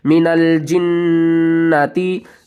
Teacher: یہاں پر ساری نون مشدد آ رہی ہیں تو سب کے اوپر غنہ کریں گے